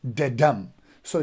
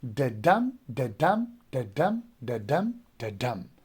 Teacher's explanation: So if you want to remember iambic foot, you have to remember this beat, da-dum. So d would be unstressed and dum would be stressed.